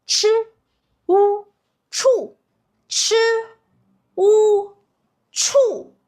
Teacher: And with a fourth tone, remember, you drop.